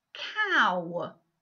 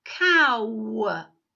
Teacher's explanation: The beginning of the speech sound, the beginning of the phoneme, is different than when we end it. The last part of it sounds like one of the speech sounds we used in the word penguin, the w speech sound.